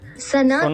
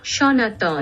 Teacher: Bengali has the corresponding letters, but they are all pronounced the same, sha.